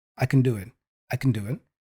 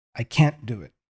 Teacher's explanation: in the middle of a phrase I would reduce the can affirmative